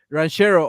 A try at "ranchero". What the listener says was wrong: my dude, like, roll your R's, man.